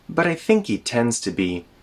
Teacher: There's a tap there for the T in but I think he. We connect the think he together, and again when we speak quickly, the h sound in he gets removed.